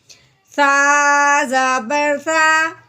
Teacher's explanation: سا کو ہم نے نرمی سے ادا کرنا ہے، سیٹی کے بعد نہیں نکالنی، سا نہیں کہنا۔